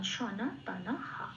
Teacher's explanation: এখানে যেহেতু এটা লাইনের প্রথম লাইনের সেকেন্ড পার্টের শেষ অক্ষর, সেই জন্য বিসর্গটা যেহেতু শেষে আছে সেই জন্য এটা পূর্ণ হয় হিসেবে উচ্চারিত হবে। এবার বিসর্গের জন্য একটা হয় এলো, নয় আকার যেহেতু আছে না, তার সাথে মিলিয়ে হয় আকারটা বসলো, হা হলো, তাহলে আমি পেলাম সনা তানা হা।